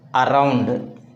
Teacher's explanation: The stress falls immediately after the weak prefix.